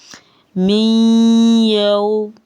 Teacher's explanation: اب یہ دیکھیں نون ساکن کے بعد واو مشدد حروف یرملون میں سے ہے، یہ 4 حروف ہم نے وہ پڑھے ہیں جن پہ غنہ بما ادغام ہونا ہے اور ہم نے نون کی آواز کو ٹوٹلی ختم نہیں کیا، اس کو ہم مدغم کر کے واو کے ساتھ پڑھ رہے ہیں · نون ساکن کے بعد یا مشدد آگے ہے، ہم ادغام بھی کریں گے اور غنہ بھی کریں گے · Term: ادغام بما غنہ